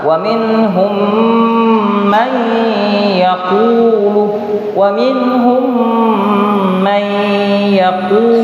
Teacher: yaitu didengunkan, didengunkan sebanyak dua harakat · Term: idgham